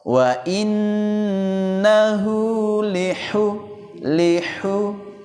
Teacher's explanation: huruf ha yang halus di posisi tengah tenggorokan.